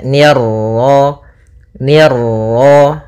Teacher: ni tipis ketemu ra yang ra tafkhim, ra tebal